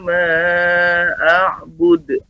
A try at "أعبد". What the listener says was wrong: Lebih ditambah lagi untuk pantulan ainnya a'bud. A'bud. Terus nanti dilatih di rumah karena sesekali kadang ainnya kurang dipantulkan ya. A'budu, ya demikian Bapak.